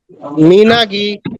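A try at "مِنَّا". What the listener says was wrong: মিনাগি, মাশাআল্লাহ।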